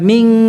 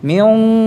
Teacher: Kalau setelah nun sakinah mukhfa, nun sukun yang dibaca dengan ikhfa ini qaf, huruf qaf tebal kan, maka gunnahnya dibaca tebal.